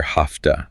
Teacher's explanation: The V sound is gone. It's been changed by the T that follows it.